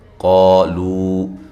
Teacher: قا الف مدہ، قاف کو موٹا